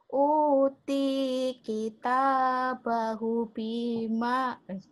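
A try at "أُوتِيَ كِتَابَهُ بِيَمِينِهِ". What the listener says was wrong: Salah Bu. Salah. Kok Uti sih? Utia tuh Bu. Ini kan ada ya-nya. Utia. Uti. Uti mah yang Uti. Utia. Biyami ini mim. Biyami ini.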